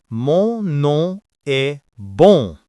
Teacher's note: let the air escape only through your nose. Your mouth should not close. If your nose is completely blocked, you can't make this sound correctly.